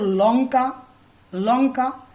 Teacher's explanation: দেখো ল, এই ধ্বনিটা আগে বলেছি দন্তমূলীয়, উচ্চারণ করো লঙ্কা, লঙ্কা। দেখবি লটা উচ্চারণ হচ্ছে দাঁতের গোড়ায় বসে